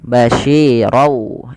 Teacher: bunyi tanwin ronnya masuk ke wau sehingga suara nunnya diganti dengan huruf wau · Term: idgham